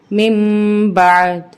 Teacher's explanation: وقف کی صورت میں زیر اومٹ ہو جائے گی لیکن دال کی آواز باقی رہے گی